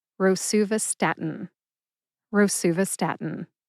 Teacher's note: Emphasize su and stat. Emphasize stat the most.